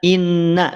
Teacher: Inna itu karakternya apa istifal tipis jadi tidak diangkat pangkal lidahnya